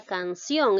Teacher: la mayor fuerza de voz lleva en la sílaba ción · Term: palabra aguda